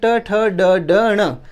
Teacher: ट वर्ग ट ठ ड ड ण, ये ट वर्ग पूरा मूर्धन्य है